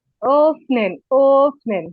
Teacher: opening জি, ও বলে একটু হালকা টান দিবেন এবং প্রেসার দিয়ে বলার চেষ্টা করবেন, একদম ঠোঁট গোল করে